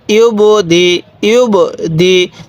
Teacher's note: দেখুন এই যে বা, এই বাটা কিন্তু কলকলা হরফ, এজন্য আমি এখানে ধাক্কা দিয়ে পড়ছি। তাহলে ইয়া বা পেশ ইউব, দালজার দি, হামজা পেশ উ, ইউব দি উ।